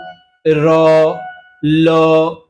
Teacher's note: জীভের ডগা বা অগ্রভাগ দন্তমূল স্পর্শ করে দন্তমূলকে স্পর্শ করছে এবং উচ্চারিত হচ্ছে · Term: দন্তমূলীয়